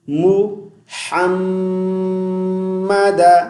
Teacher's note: ہا کو میم مشدد کے ساتھ ملائیں گے، غنہ کریں گے